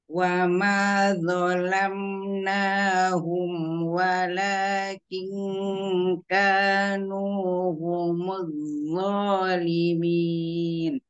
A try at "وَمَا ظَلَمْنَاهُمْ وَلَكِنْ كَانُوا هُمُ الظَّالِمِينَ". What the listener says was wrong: Wo yang pertama tebalkan. Coba tadi masih gini. Wa ma zalam zalam. Jangan hanya sekedar zalam, tapi angkat pangkal lidahnya. Wa ma wo zalam gitu ya.